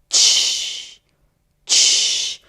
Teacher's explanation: So the affricate, right behind that little bump, a post-alveolar affricate would be ch, right? So you block the sound with a T, but instead of releasing it, t, you're releasing it into the closest fricative, ch. So basically it's like a T and a sh sound together. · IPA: /tʃ/